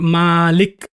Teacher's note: if i elongate the sound malik i completely change the meaning of the word now the word actually means owner or master and this